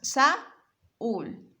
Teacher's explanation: La palabra Saúl tiene las vocales separadas